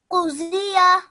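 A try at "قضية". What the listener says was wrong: I have highlighted all of it, but Z is how you would pronounce it in Urdu. In Arabic, you pronounce it as D. D. But I don't want to hear the Z sound.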